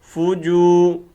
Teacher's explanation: یہ واو مدہ ہے، فوجو، ایک الف کے اندر کھینچیں گے